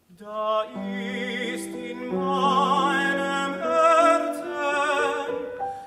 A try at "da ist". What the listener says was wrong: Excuse me, it's not open enough. Herzen, Herzen. Open your mouth, it's big enough. Give it space. A little bit more.